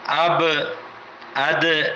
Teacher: آواز میں جنبش آتی ہے، لوٹ کر واپس آتی ہے آواز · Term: قلقلہ